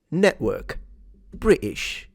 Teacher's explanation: if you remove a T from British and network, you sound posh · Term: glottal stop